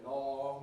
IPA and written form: lɒŋ (long)